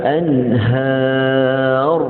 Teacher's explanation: Dia tahu ra tu nak tebal, dia tebal awal daripada ha. Asalnya sepatut anhar, bila nak berhenti pada ra baru tebalkan ra.